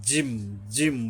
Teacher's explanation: এই যে জিম হইল জিব্বার মাঝখানটা তালুর উপরে গিয়া শক্তভাবে মিশবে, জিম, জিম বলার সময় এরকমের শক্ত হবে।